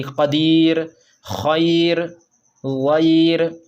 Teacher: رائے ساکنہ سے پہلے یائے ساکنہ ہے، تو رائے ساکنہ اب باریک ہوگی